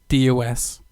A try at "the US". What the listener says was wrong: D-U-S. The. You said D-U-S as in dus.